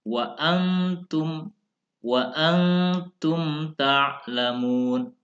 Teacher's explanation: mim sukun ini pelafalannya adalah dengan mengatupkan kedua bibir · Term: izhar syafawi